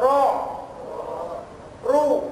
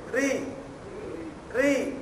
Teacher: را، منہ سیدھا کھولیے، اور اب اس میں آواز موٹی ہوتی ہے، اس میں آواز اوپر کی طرف را رو، اور جب آواز باریک ہوتی ہے نیچے ری ری۔